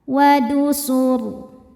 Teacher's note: Karena rnya disukunkan sebelumnya ada dommah, maka rnya tebal.